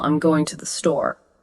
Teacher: The stressed syllables are on go and store. These are the words carrying the keynote information, the rhythmic beats you absolutely need to catch.